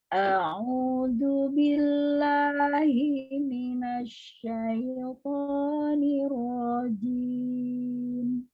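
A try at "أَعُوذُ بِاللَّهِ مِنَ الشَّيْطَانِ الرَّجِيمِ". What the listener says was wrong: Ya, syaitoni. Ya, syaitoni. jadi itu lebih ya. Jadi satu aja. Kalaupun pakai nada tetap 2 harakat.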